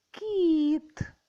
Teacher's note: перший звук к М'який приголосний другий звук і голосний третій звук т твердий приголосний позначаємо [музика]